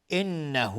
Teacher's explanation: نون مشدد دو حرکت غنه میدیم. های ضمیر مد صله صغراست.